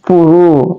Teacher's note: ro adalah tarful lisan, ro cuma agak tebal.